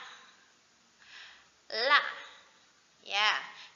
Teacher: La itu kan ujung lidah menempel ke belakang gigi seri.